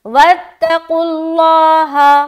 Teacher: اب یہاں پر دیکھیں لفظ اللہ، اس سے پہلے کیا ہے، پیش ہے، تو ظاہری بات ہے لفظ اللہ کو کیا کریں گے، موٹا کریں گے، یعنی کہ لفظ اللہ کا لام کو موٹا کریں گے، پورا اللہ ہو ایسا نہیں، صرف لفظ اللہ کا لام موٹا ہوگا۔